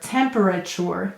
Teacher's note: did you hear what happens when i say it fast that sounds like a ch